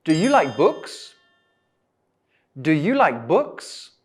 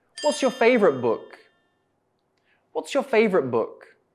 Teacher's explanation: my intonation goes up at the end do you like books and in the second one it goes down